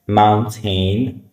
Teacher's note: And the next part glal stop like glal say glal stop. T sound disappears replaced by the throat catch.